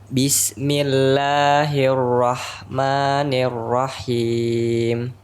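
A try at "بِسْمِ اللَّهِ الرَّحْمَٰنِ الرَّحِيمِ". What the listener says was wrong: Dan rahim. Haknya jangan seperti ada tasdid. Rahim, tapi rahim. Rahim.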